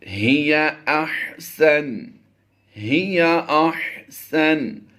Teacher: ہا اور ہا میں ہم نے فرق ظاہر کر کے پڑھنا ہے۔ ہی حلق کے نیچے والے حصے سے ادا ہوگا اور یہ ہا حلق کے درمیان والے حصہ سے ادا ہوگا · یا مدہ ہے لمبا کر کے پڑھیں گے ایک الف